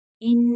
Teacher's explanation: ان نون مشدد ہے، یہاں غنہ ہوگا